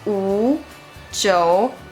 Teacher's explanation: are the third tone. It's called falling rising tone. The pitch starts on a low point, so remember to start with a low pitch.